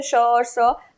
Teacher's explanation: UP Bihar में मान लीजिए श और स दोनों एक ही होता है